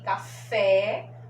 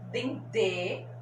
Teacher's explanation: café com o som aberto, dendê com o som fechado